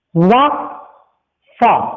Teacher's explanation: दंतोष्ठ में क्या होगा, नीचे का होंठ रहेगा और ऊपर का दांत रहेगा